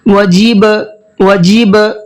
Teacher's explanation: با حروف قلقلہ میں سے ہے، اس میں قلقلہ کرتے ہیں